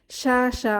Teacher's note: হরফটি সা আওয়াজে ছড়িয়ে পড়ে শিন শিনের মাখরাজটা যদি আমরা দেখি জিহবার মধ্যভাগ উপরের তালুর সাথে লাগতে চায় এবং সামনের উপরের পার্টির এবং নিচের পার্টির দাঁতের ভেতরে সামান্য স্পেস থাকে এবং আওয়াজটি বের হয়ে যায় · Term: তাফাস